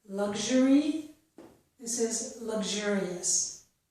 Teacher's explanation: The letter X makes two sounds, and with the XU, we can either get the two sounds g and j, which are both voiced